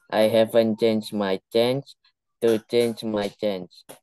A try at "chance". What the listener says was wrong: Chance. Okay, it's with S. You can say it with S. Chance. So it is chance, not change. Okay, it's a different word.